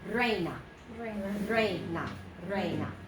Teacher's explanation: 2 syllables starting with the rolled R if you can.